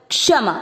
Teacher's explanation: उसका आधा क का उच्चारण आपको छोड़ना नहीं